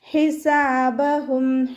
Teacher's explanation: ഹൻ്റെ മഖ്റജ് വസത്തുൽ ഹൽക്കാണ്, ഹംസയായി പോവാതെ ശ്രദ്ധിക്കുക